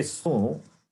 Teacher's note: su is sakara plus ukara, that ukara is nasalized ukara